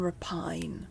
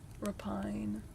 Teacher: the emphasis is on the first syllable though